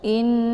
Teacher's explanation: i-nya ditekan, kemudian ditahan suaranya 2 harokat sambil meleburkan suara ke dalam huruf nun. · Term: gunnah musyaddadah